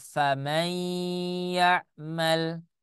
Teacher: Seharusnya dibaca faman ya'mal, tetapi karena dia masuk ke dalam kaidah idgham bi gunnah, idgham itu artinya meleburkan, bi gunnah itu artinya dengan menggunakan, maka n-nya yang seharusnya ada di tanwin tidak terbaca. Jadi dibacanya faman ya'mal, bukan faman ya'mal.